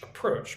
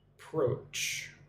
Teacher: Put the emphasis on the second syllable. Approach. Make sure you get the the ch sound.